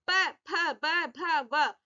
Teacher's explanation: Lips के पास से, होठों के पास से आवाज आ रही है। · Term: ओष्ठे